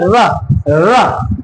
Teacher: र के उच्चारण में आप देख रहे होंगे जीभ का अगला हिस्सा क्या हो रहा है, गोल होता जा रहा है, ठीक है। और मुख को क्या कर ले रहा है, बंद सा कर दे रहा है, र। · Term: लुंठित